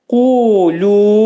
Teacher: Qaf hərfinin məxrəci dilçəyin başlanğıcındadır.